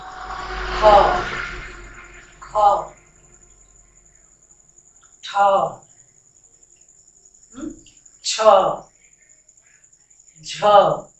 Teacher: इसमें ज्यादा वायु खर्च हो रही है, इसलिए ये क्या है, महाप्राण है